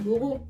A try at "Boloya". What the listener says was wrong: Non, non, c'est Bolo, c'est pas Boro. Boloya, alors attends. Boloya.